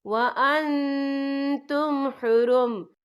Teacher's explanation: احلت لکم بہیمۃ الانعام الا ما یتلی علیکم غیر محل الصید وَأَنْتُمْ حُرُمْ، یا دیکھیں وَأَن، یہاں نون ساکن ہے، نون ساکن کے بعد جو ہے تا آ رہا ہے، اور تا جو ہے اخفا کا ورڈ ہے، تو ہم یہاں اخفا کریں گے، نون ساکن کی آواز کو ناک میں چھپائیں گے